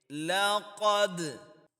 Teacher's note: اب یہاں پہ جو دال حرف ہے، یہ قلقلہ حروف میں سے ہے۔ دال کے اوپر ہم قلقلہ کریں گے، یعنی کہ ایکو ساؤنڈ کی شکل میں پڑھیں گے